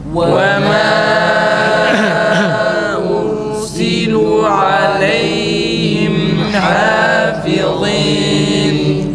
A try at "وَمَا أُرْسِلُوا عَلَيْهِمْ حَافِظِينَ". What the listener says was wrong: Lamı uzatalım. وَمَا أُرْسِلُوا.